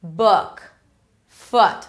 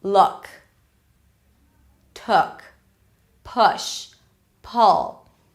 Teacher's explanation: think about the relaxed ʊ as in 'book' foot and 'look' as a middle sound between the tense 'u' and the schwa